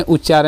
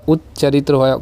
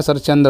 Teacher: त के बाद यदि च और छ में से कोई भी आएगा तो जो त है ये च में ही चेंज हो जाएगा।